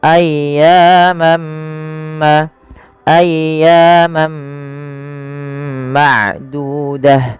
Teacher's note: Maka ketika ada tanwin bertemu dengan huruf mim, yaitu langkahnya adalah masukkan tanwinnya kepada huruf mim dan diganti bunyinya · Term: idgham